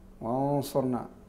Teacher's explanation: والغنة هنا بما أنها قبل حرف الاستعلاء تكون فيها صفة الاستعلاء أيضا، فيها استعلاء.